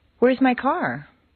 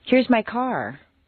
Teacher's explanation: a question Rises a little higher than a statement with the same intonation pattern